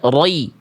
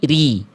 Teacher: Tebal itu naik pangkal lidah. Kalau ro-nya kasroh, vokal i maka tipis, maka pangkal lidahnya turun. Jadi nggak dibaca roi, tapi ri.